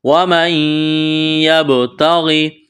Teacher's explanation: نون ساکن اور تنوین کے بعد اگر 6 حروف آ جائے یا، را، میم، لام، واو، نون، جس کو یرملون کہتے ہیں، تو وہاں پر ادغام کیا جاتا ہے۔ یہاں نون کا یا میں ادغام کریں گے غنّے کے ساتھ۔